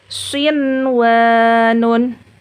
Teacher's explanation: Jadi dibaca jelas atau izhar karena nun sukunnya bertemu dengan huruf ya dan wawu dalam satu kata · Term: izhar mutlak